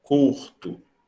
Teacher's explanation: Você não está no plano da escrita ortográfica, não é o C, é o K, é o fonema K que está em jogo. Portanto, é a consoante velar, oclusiva velar, desvozeada ou surda.